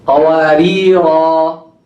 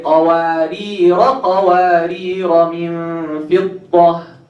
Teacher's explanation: When you see this symbol on the alif, this means if you stop, you pronounce the alif. If you connect, you drop the alif.